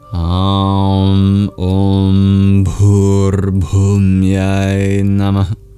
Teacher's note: All the vowels are long except for Namah. And at the end of Namah, you will hear that visarga being like a mini exhale. Also the H in Bhu and Bhumyai.